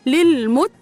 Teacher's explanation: الساكن لازم اجيب اللي قبله هدلل ميم متحركه بالضم مو للمو تاء من حروف الهمس مشدده بالفتح والحرف المشدد مقداره حركتين الاول ساكن والثاني متحرك للمت قاف متحركه